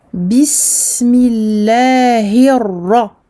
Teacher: le ra que j'emphatise car il porte une fatha et que je double car il porte une shadda. Bismillahirra.